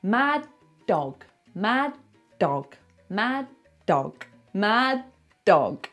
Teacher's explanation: Find the sound, find the d of mad, but don't release it. Don't go d, just go mad dog.